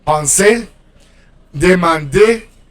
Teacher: You pronounce the e. In French, it's not really like the Spanish e, but it's more like the like a schwa, accented schwa.